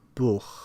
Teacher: Velar fricatives are found in German as in Buch, book, Buch.